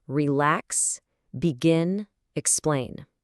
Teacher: The energy comes at the end. · We put the stress on the second part.